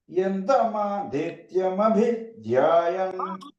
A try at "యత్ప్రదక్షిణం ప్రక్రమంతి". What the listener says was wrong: మా పైగానండి, మా ఉదాత్తం చెప్పండి.